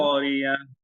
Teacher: আইনটা আর একটু গলা থেকে এখানে খেয়াল রাখবেন অনেকে পড়ার সময় হয় কি আল করিয়া হয়ে